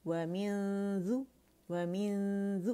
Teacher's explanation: ذال کے مخرج کے قریب جائیں گے رائٹ اوے غنہ کرتے ہوئے، لیکن ذال کو ٹچ نہیں کریں گے اس وقت تک جب تک کاملہ گریڈ کا ہم نے غنہ ادا نہ کر دیا. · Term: اخفا